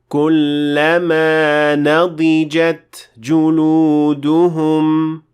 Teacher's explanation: you will hear a little gush of air that follows the ta · the sound te is a whispering sound which means that it can easily be left out since it is not the most audible sound and that's why · make sure to completely pronounce the ta, finish pronouncing it first, let the gush of air come out, ta, and then proceed to the next word.